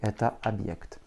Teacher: Pour écrire le mot объект, nous allons commencer par un O, puis un B, твердый знак, Y, K, T, avec un accent tonique sur le Y. Donc le O va se prononcer comme un A.